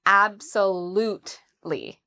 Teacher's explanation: So the stress is on the third syllable.